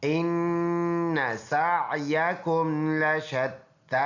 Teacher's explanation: یہ حمزہ ہے، نون مشدد پکا غنہ، سین میں سیٹی والا حرف ہے اور عین کے ساتھ ملا ہوا ہے، یا متحرک ہے، یہ کاف ہے، بعض بچوں کو اشتباہ ہو جاتا ہے کہ یہ تو یا ہے، پر یہ کاف ہے۔